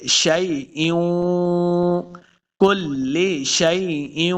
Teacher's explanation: حمزہ کو واو کے ساتھ ملانا ہے تو یہاں پہ ہم غنہ کریں گے